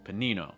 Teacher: that first syllable is really fast and that second syllable is held longer